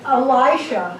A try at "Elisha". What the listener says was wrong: You said Elijah. It's Elisha.